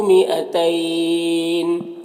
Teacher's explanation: مئتین، یہاں پر الف کو نہیں پڑھیں گے، اور یہاں پر دیکھیے یا لین ہے، یا ساکن سے پہلے تا کے اوپر زبر ہے تو یا لین ہوا، اور اگر یہاں پر وقف کریں گے تو نون کا زیر سکون سے بدل جائے گا، تو پھر مد لین عارض ہوگا۔